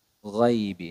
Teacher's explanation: Jadi makhrajnya huruf ghain itu pada uh, adnal halqi atau pada ujung tenggorokan, ya. Pada ujung tenggorokan.